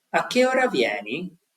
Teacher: So you see, you're going up and then you drop